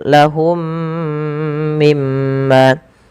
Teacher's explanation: mim yang pertama ketika ia sukun bertemu dengan mim setelahnya, maka ini wajib ditahan suara mimnya · Cara membacanya masukkan mim pertama kedua dan ditahan. Kemudian mim pada lafal yang kedua ada bacaan gunnah, ditahan suara mimnya karena dia bacaan gunnah. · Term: idgham mimi